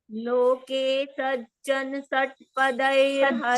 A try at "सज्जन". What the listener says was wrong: Sajjan, no, not sajjan. Sajjana. No has to be chanted full. Loke sajjana षट्पदैरहरहः.